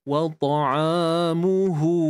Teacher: Mu dengan hu ni dua-dua kita muncungkan bibir kerana ianya berbaris hadapan.